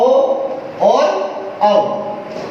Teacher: ओ बोल रहे हैं तो यहाँ हमारे पीछे की ओर जिह्वा की सक्रिय है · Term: पश्च स्वर